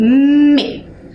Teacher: percebam que os meus lábios eles se encontram